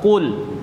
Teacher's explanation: dia qaf bukan kaf, bukan kul, kul, tapi dia tebal. Qul, dia punya sifat namanya sifat isti'la.